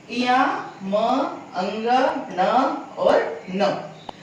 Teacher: ये नासिक्य वर्ण कहलाते हैं, क्योंकि इनका उच्चारण में नाक की सहायता भी ली जाती है। नाक से भी इनका उच्चारण होता है।